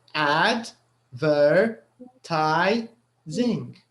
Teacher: The third syllable is the one which is stressed in this word.